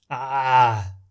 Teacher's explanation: contracting the muscles in the middle of the throat and therefore sounds similar to the sound made by someone being choked. An easy way to explain this sound is to tell you to take a look at the English accent of former US Governor and actor Arnold Schwarzenegger. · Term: Ayn